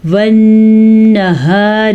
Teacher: نون کے اوپر غنہ کریں گے کیونکہ نون کے اوپر شد ہے، تو شد کی وجہ سے نون اور میم کے ساتھ غنہ کیا جاتا ہے۔